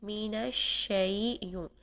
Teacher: ہم نے یہاں پر شین کو ادا کرتے ہوئے آواز اور سانس دونوں جاری کرنے ہیں اور نرمی سے شین کو ادا کرنا ہے